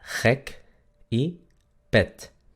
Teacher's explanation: Luego tenemos el sonido de la E. En holandés, la E es un poco más central.